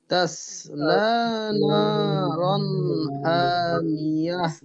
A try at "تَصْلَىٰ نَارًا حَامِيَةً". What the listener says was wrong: হাটা আরো ক্লিয়ারলি, حامية تصلى نارا حامية